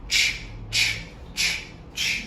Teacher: ch comes quite quickly. We can't have an extended ch going into a vowel. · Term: ch sound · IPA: /tʃ/